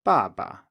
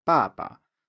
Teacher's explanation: So in a word like baba, father, dad, baba, the ba here is low, and of course the end of the first ba is also low, but we stay down there. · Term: neutral tone